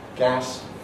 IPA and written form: gæs (gas)